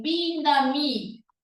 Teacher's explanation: En vez de la E, pronuncia las Es como si fueran is. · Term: huellas maternas del quechua